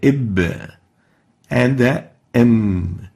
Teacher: joining the 2 lips together, and we call it bilabial